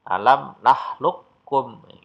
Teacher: Di situ ada huruf qaf ketemu dengan kaf, qafnya bersukun, maka huruf qafnya dilenyapkan, langsung masuk kaf yang bersajah atau bertasdid tadi. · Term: idgham mutaqarribain